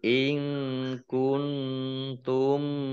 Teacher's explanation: gunnah dibaca mendengung, ditahan 2 harokat